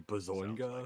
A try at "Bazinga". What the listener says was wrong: It's Bazinga, but you didn't. You didn't pronounce the G. You pronounced it so softly. It's like Bazinga.